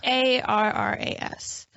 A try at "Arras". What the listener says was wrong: I think you gotta roll the R's.